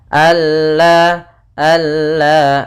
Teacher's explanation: di sini juga idgham Kamil idgham yang sempurna idgham Kamil yaitu nunnya hilang langsung kepada huruf lam